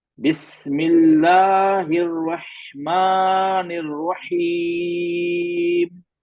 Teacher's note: बिस्मिल्लाहिर्रहमानिर्रहीम, चार हरकत खींच के रुका मैं।